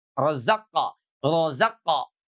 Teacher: Karena huruf qof itu adalah huruf istila, maka qalqalahnya itu menebal gitu ya. Kalau qalqahnya menebal itu cenderung kepada fathah.